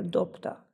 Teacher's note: Itt van például a dobta szavunk, ugye B-vel írjuk le, de a kiejtésben P hangzik el, méghozzá pont a mellettük álló T miatt, hiszen ez a T, ez egy zöngétlen T hang, és sokkal egyszerűbb kimondani, megkönnyíti a kiejtést, hogyha egy másik zöngétlen kerül mellé.